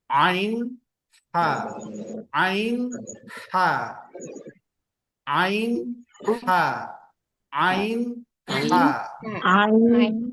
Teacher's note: Kemudian bagian yang kedua atau disebut dengan wastul halqi, pertengahan huruf tenggorokan, berarti dia di tengah-tengah. Kalau dia laki-laki pas di buah zakunnya itu, bagian tengah.